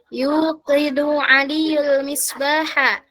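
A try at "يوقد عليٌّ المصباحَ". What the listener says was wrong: Itu aliyun bacanya ya, tetap ada tanwinnya. Yuqidu aliyunil misbaha, gitu cara bacanya.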